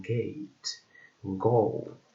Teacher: Then we have G, in this case, or G, like in which is a voiced velar and stop sound · is a voiced velar and stop sound, like in gate, go